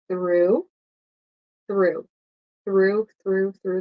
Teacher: So through, ooh, ooh. Remember your tongue is between your teeth for TH. And there's no vibration in your throat.